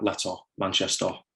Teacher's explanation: people pronounce the kind of schwa vowel at the end of words like Manchester, more like o, and also words like letter, hence why we call it letter backing.